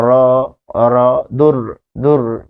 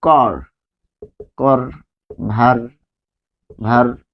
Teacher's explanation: দূর, দূর বললে একটা কম্পন সৃষ্টি হয় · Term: কম্পিত ব্যঞ্জন